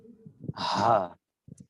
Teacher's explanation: হলকের শুরু থেকে উচ্চারিত হচ্ছে ছোট হা। হা এটা একদম বুকের কাছাকাছি অংশ, কণ্ঠনালীর যে অংশ, সেখান থেকে উচ্চারিত হচ্ছে হা। আর তারই একটু উপর থেকে আমাদের বড় হা।